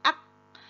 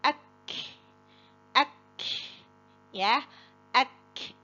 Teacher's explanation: huruf Kaf itu dia kuat syiddah suaranya tertahan ak lalu diikuti dengan udara akek akek ya akek tsaruhum tsa